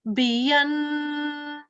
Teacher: So the thing to note here is 2 seconds for nasal sound and 2 seconds for ishbaya.